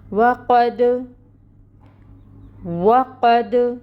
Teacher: دال ساکن حروف قلقلہ میں سے، تو اس کے اوپر قلقلہ ہوگا، یعنی دال کو ہلائیں گے، آواز باؤنس ہوگی · واو کے لیے اپنے لپس کو راؤنڈ کیجئے اور واو کو ادا کریں، اور اس کے اوپر جو فتحہ کی حرکت ہے زبر، اس کے لیے انفتاح ہوگا، منہ کو کھولیں گے اور 1 کاؤنٹ کے برابر حرکت کو ادا کریں گے۔ قوف حروف مستعلیہ میں سے ہے، پر ہوگا اور اس کے اوپر فتحہ کی حرکت ہے، یہ بھی 1 کاؤنٹ ادا کی جائے گی۔